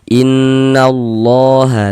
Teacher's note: Ini menandakan huruf kalau di atasnya ada tanda seperti ini dibaca panjang. Nah, sehingga lafaz Allah kita baca panjang, mad tabi'i panjang 2 harokat. Innallaha la dibaca panjang.